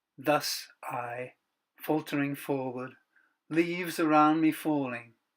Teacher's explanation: In this last stanza, the dactylic rhythm breaks down almost completely. The key word here is faltering.